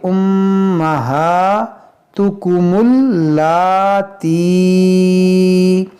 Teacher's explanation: यहाँ पर आप देखें कि मीम मुशद्दद है, इसमें गुन्ना करेंगे, हा पर खड़ा ज़बर है जो खींचेंगे।